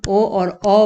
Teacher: कंठोष्ठ्य में क्या होता है, कंठ के द्वारा जीभ और ओठों के कुछ स्पर्श से हम ओ और औ बोलते हैं